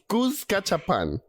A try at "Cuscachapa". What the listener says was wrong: Cuscachapa. Without the N at the end. Cuscachapa.